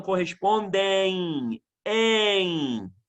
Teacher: Existe um ditongo no final, quando a palavra termina com M, né? O ditongo é nasal com I, em.